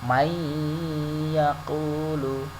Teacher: Tidak man yaqulu, tapi may yaqulu, non matinya langsung masuk ke ya. Nah, cara bacanya dengan berdengung, may yaqulu. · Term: idgham bi gunnah